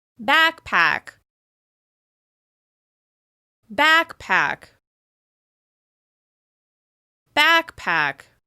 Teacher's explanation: You can hear that the vowel sound on the first syllable is extra clear. It helps create that contrast, that clear distinction between the first and the second syllable, which helps your listener identify the word you're saying.